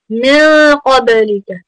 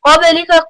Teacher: You have ikhfa on the noon there. Qabalika, qaf is from huruf tafkhim. Make sure that you have it full mouth there. Ba is from huruf qalqala, so you need to make sure you bounce it.